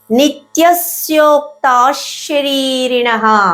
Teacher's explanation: తాళివయ ష వచ్చింది అంటే అది విసర్గని శగా పలికించేస్తుంది కాబట్టి విసర్గ సపరేట్ గా పలకకూడదు · దాన్ని మనం తెలుగులో మెలికస అంటాం. తాళవ్య ష వచ్చింది అంటే అది విసర్గని షాగా పలికిచ్చేస్తుంది.